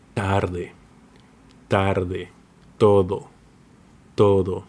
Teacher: It's softer and dental. The tongue touches the teeth